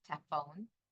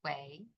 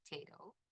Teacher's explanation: He also has unstressed syllable deletion.